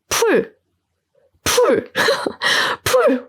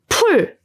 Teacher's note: 풀 used the most air. 풀, the sound burst, the air burst, boom.